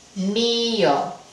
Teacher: necesitamos destruir ese diptongo y enfatizar la vocal débil